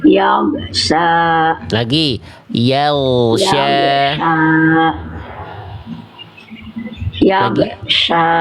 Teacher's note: Gin sukunnya jangan sampai mantul. Yag suaranya ngalir.